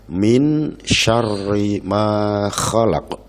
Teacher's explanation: Suara nun mati disamarkan menjadi min syarri ma khalaq. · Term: ikhfa